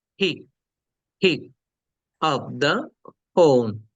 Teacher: প্লিজ, পিক, পিক আপ দা ফোন। তাহলে পিক বলার সময় যেটা বলেছি, দুই ঠোঁট মিলিয়েছি তারপরে ধাক্কা দিয়েছি